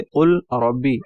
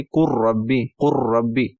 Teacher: जैसे कुल रब्बी, अब इसको हम पढ़ेंगे कुर रब्बी, रा के ऊपर शिद्दत देंगे कि यहाँ पर भी इदगाम होगा